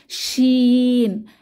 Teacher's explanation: জিহ্বার মধ্যভাগ তার বরাবর উপরের তালুর সাথে লাগিয়ে উচ্চারিত হয় শিন। তবে শিন উচ্চারণের সময় জিহ্বার মাঝখান তালুকে পুরোপুরি স্পর্শ করে না, কিছুটা ফাঁকা থাকে। শিন। এবং শিন হরফটি উচ্চারণের সময় আওয়াজ মুখের ভেতরে ছড়িয়ে পড়ে, সা সা একটি আওয়াজ মুখের চারপাশে ছড়িয়ে পড়ে।